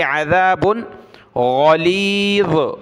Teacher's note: عین نکالیں گلے سے، ذال پر زبان نکالی ، عذاب غلیظ، غین اور ذا کو ہم نے موٹا پڑھنا